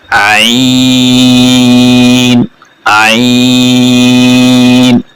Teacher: गले से इसकी अदायगी होगी जोर लगा के